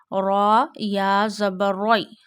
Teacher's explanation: This is called al if ma la red read uh in a thick voice because when zabar and pes comes on raw you read raw with a thick voice